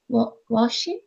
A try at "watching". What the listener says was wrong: Watching. shin, not washing. Washing. Watching. Like T.